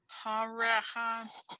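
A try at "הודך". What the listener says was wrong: That's a Dalet. Hodecha.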